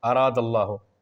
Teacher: لفظ اللہ کا جو لام ہے اس سے پہلے دال ہے اور اس کے اوپر زبر ہے، تو اس لام کو پر پڑھیں گے یعنی موٹا پڑھیں گے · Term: تفخیم